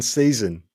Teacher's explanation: this sound is known as a syllabic nasal consonant which means it functions as both the consonant and a vowel in a syllable